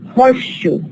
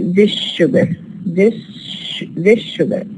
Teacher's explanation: A horseshoe, which is sha. And as if we have sa and sha becoming identical, and they are produced as one sound.